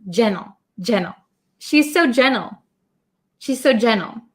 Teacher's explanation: when I say it quickly as an American English speaker I often cut the T sound